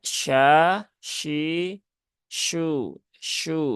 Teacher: sedikit teknis ya E enggak apa-apa kemudian ee syuhud nah ini hurufnya syin ya syin Tengah lidah langit-langit atas · Shin tengah lidah langit-langit atas